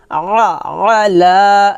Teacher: আইনটা একটু চাপ দিয়ে বলতে হবে গলার মাঝখান থেকে